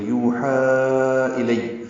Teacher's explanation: یوحا واو مدہ ہے اور ہا پہ کھڑا زبر، اور اس کے بعد الیہ کا حمزہ آنے کی وجہ سے مد منفصل، یوحا الی، لام کو یا سے ملائیں گے، یا کو جلدی سے پڑھیں گے